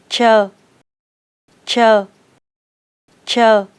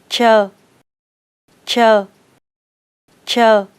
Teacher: Open your mouth slightly, place your tongue on the alveolar ridge, and flick it strongly, without blowing air.